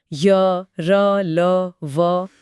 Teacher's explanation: इनमें हवा पूरी तरह ब्लॉक नहीं होती। बस एक निरंतर प्रवाह के साथ किनारों से फिसलते हुए बाहर निकलती है। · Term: अंतस्थ व्यंजन